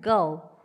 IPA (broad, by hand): gəu